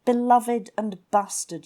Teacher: the B is a plosive sound, which is made by sort of compressing air behind your lips and letting it go. P's and B's are regarded as plosives.